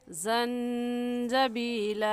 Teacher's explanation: ज़ंजबीला में नून साकिन के बाद हुरूफ हल्की में से कोई लफ्ज़ नहीं है, इस वजह से इस नून साकिन पर हम गुन्ना करेंगे